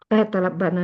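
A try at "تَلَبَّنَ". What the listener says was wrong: Berarti ada bertasdid ini. Kan awalannya tak. Kalau awalannya tak itu pilihannya cuma dua. Kalau nggak tasdid pasti alif. Ya, talabbana.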